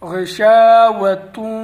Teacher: واو مشدد ہے اس لیے سخت کر کے پڑھیں گے